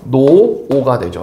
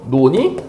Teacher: 받침인 리을이 느르브스오를 만나서 이렇게 탈락하는 현상을 뭐라고 한다? 리을 탈락이라고 한다